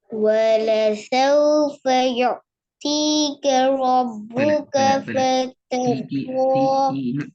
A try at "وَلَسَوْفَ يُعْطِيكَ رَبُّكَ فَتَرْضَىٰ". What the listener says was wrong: تي ساوند பெற. تي சவுண்ட் பெற. திக்காம போதுங்க. திக்கு இப்படி திக்கப்படாதா? திக்காம போதுங்க பாபு. ரப்புக்கன்னு நிக்கிறீங்களே, நிக்காம போது நிக்க வேணாம். அப்படி ரப்புக்க.